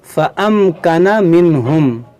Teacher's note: یہاں نون ساکن کے بعد ہا ہے تو یہاں پر اظہار ہوگا، یہاں پر غنہ نہیں کریں گے